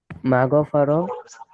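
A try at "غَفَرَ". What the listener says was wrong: মাগো ফরা না, মিম মিম থাকলে মিমটা পড়া দরকার নেই। হুম, মিম থাকলে মিমটা পড়ার প্রয়োজন নেই। গফারা ইয়াগফিরু ইগফির, গফারা ইয়াগফিরু ইগফির।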